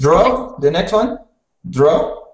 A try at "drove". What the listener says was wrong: So the R was a little bit rolled before. So say drove again.